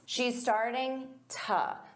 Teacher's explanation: So instead of to, you can use an unstressed t.